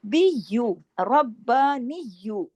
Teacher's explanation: را موٹا بھی ہوگا، را پہ تشدید بھی ہے. بی یو، ربانیو، اس پہ بھی سختی سے جوڑنا ہے تشدید کی وجہ سے.